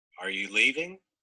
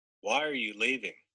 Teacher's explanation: there's a definite difference in a yes, no question rising and a WH question falling